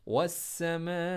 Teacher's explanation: تو والسماء میں سین کو جب آپ پڑھیں گے تو سین کو اسٹریس کے ساتھ پڑھیں. میم کے اوپر جو الف ہے مدہ ہے اس کو اپنے 6 زبر کے برابر اپنے اس کو کھینچنا ہے